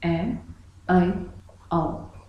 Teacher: इन तीनों के उच्चारण में मुख पूरा ना खुल के आधा खुलता है। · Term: अर्ध विवृत स्वर